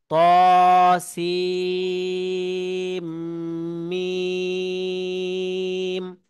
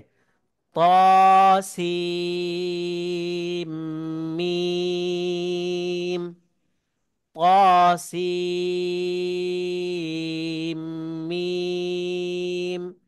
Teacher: সিনকে চার আলিফ টানতে হবে মিমে গুন্না করতে হবে এবং চার আলিফ টান দিতে হবে মোট নয় আলিফ টান দিতে হবে এবং গুন্না করে পড়তে হবে